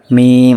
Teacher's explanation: মিমটা উচ্চারণ হয় ঠোঁটের শুকনা অংশ হতে মিম উচ্চারিত হয়। ঠিক আছে, ঠোঁটের শুকনা, তো মিমটা একটু মানে ঠোঁটটা একটু বন্ধ করে তারপরে মিমটা চাপ দেবেন, মিম।